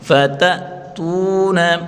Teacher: یوم ینفخ فی الصور فتأتون حمزہ ساکن کو جھٹکے کے ساتھ پڑھیں گے فتأتون. تا واو پیش تو وا مدہ ایک الف کی مقدار کھینچ کر پڑھیں گے